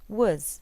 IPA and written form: w.z (was)